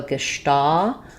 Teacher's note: The stress is on the sta syllable, and letter S says the SH sound in German.